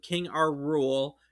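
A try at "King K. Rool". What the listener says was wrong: You said our rule, but King like cruel. K rule.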